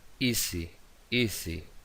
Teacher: Entonces ahí tenemos la vibración de esa S sonora, como si fuese un zumbido. · Vemos que vibra ahí esa S entre vocales.